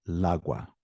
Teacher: So if I were to say la agua, it would sound like lagua, one word. So the article is changed to an el to have that break in sound.